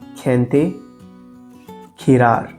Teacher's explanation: Just like the letter C, the letter G also changes its sound depending on the vowel. When G comes before E or I, it sounds like Spanish jota, the same harsh h sound.